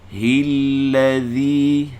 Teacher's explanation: keluar lidah daripada hujung lidah, keluar dari guntingan dua gigi depan. Keluar dua harakat. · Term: zal